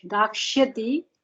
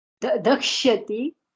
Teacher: you are making dirgha in the first letter. Keep it hrisva.